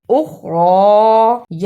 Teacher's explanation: خا کو موٹا پڑھنا اور را کو پر پڑھنا